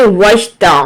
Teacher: عین کو middle throat سے ادا کریں گے